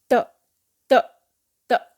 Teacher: आपकी जो टंग है वो त यानी ऊपर वाले दांत को टच करके नीचे आती है